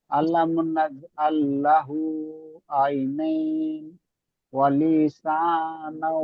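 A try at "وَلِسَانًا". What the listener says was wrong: লিতে টান হয়ে গেল, এই লিতে টান হয়ে যাচ্ছে। ওয়ালি, দেখেন, ওয়ালিসা।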